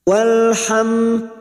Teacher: Walham mim sukun bertemu dal idhar syafawi. Mim sukun dibaca jelas tanpa mendengung. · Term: izhar syafawi